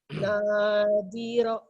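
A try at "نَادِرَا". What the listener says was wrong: Ro-nya juga panjang, Bu. Kan ada alifnya tuh. Nadiro.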